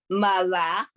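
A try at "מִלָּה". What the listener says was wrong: It's better to go Mila, not Mala, Mila, okay.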